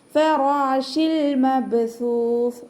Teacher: ഫതഹ ആയതുകൊണ്ട് റ ഉയർത്തിയിട്ട് ഉച്ചരിക്കുക. · ലാമിന് നമ്മൾ ഹാഫ് സുക്കൂന് കൊടുക്കുക കേട്ടോ. ഫ ഉച്ചരിക്കുമ്പോൾ കുറച്ച് ലൈറ്റ് ആക്കിയിട്ട് ഉച്ചരിക്കണം. കാരണം നമ്മുടെ മേലെ മുൻപല്ല് താഴെ ചുണ്ടിൻ്റെ ഉൾവശത്ത് വെച്ചിട്ട് ഉച്ചരിക്കും.